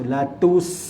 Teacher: Latus maksudnya sin mati, iaitu huruf hamas. Kita kena keluarkan dia punya hamas, latus, biar bunyi. Okey, nyatakan kematian dia.